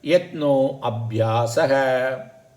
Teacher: the a u they join together to become o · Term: guna sandhi